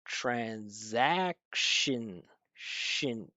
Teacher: it's written with a schwa, but again, because that N is so strong with the vibration, it just takes right over. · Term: syllabic N